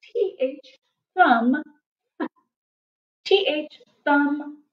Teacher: So T-H, thumb, T-H, thumb, now remember, our T-H kind of makes a sound like in the word the, but that's not its regular sound. Usually we want to use that T-H, thumb, lots of air, almost like a F, but a, where your tongue comes through your teeth just a little bit.